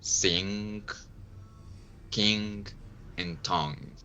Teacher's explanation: So that's we have all the difference between these three phonms. So you block the airflow with the back of your tongue and then you release it through your nose